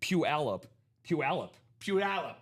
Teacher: It's a 3-syllable word with the stress on the second syllable, commonly pronounced as Puyallup.